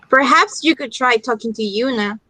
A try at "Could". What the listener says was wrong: Could the modal, you need to take out the L sound. You don't pronounce could. You pronounce without the L. Could.